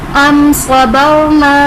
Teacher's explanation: अम सबरना, रॉ साकिन से पहले हर्फ पर ज़बर है तो रॉ को पुर पढ़ेंगे।